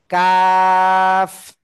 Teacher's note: আবার বলি, জিব্বার গোড়া থেকে, সদের ক্যামেরা অফ রয়েছে, জিব্বার গোড়া থেকে একটু আগে বাড়িয়ে, গোড়া থেকে একটু আগে বাড়িয়ে, জিব্বার গোড়া থেকে একটু আগে বাড়িয়ে, তার বরাবর উপরে তালুর সাথে লাগিয়ে কাফ। জিব্বার গোড়া থেকে একটু আগে বাড়িয়ে, তার বরাবর উপরে তালুর সাথে লাগিয়ে কাফ।